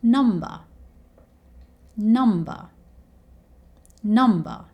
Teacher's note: So number here is the word that ends with the R sound. So again, we replace the R sound with the schwa sound.